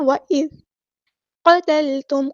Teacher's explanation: قاف ہمارا heavy letter ہے، پورا ادا کریں گے. قتلتم نہیں کرنا، لام ساکن کو ہلانا نہیں ہے.